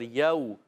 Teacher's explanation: واو ساکن پہلے زبر، واو لین ہو گیا، نرمی سے ادا کریں گے